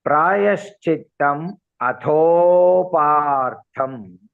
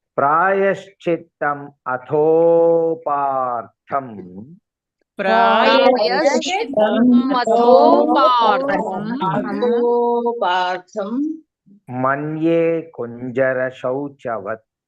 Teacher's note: Atho ko elongate karna hai. Then only it will be more correct.